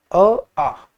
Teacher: अ को अगर आप ज्यादा समय लेकर बोले ज्यादा सांस छोड़े तो आ बोला जाएगा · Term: मात्रा या दीर्घ